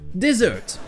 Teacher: Dessert. Première syllabe non accentuée avec le son et